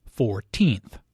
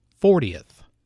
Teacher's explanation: The stress is on the second syllable, 14th. Compare this with 40th.